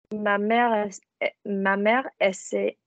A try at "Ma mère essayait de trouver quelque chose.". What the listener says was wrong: Don't have a pause. Ma mère essayait. Don't slide from one word. Ma mère essayait